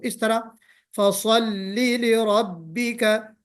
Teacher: लाम हरफे तरकीक है, यानी बारीक पढ़ा जाएगा। तो स्वाद को मोटा पढ़ें और सीटी भी बजाएं उसमें हल्की सी, लेकिन लाम को बारीक पढ़ना है। तो इस तरह फसल्लि लिरब्बिका, फसल्लि नहीं होना चाहिए, फसल्लि ये गलत हो जाएगा।